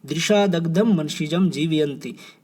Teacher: ज य और श ये जो है तालु जो हमारा उच्चारण स्थान है उससे लिए गए हैं , तो यहाँ पर श्रुत्यानुप्रास होगा। फोर्थ जो है, फोर्थ क्या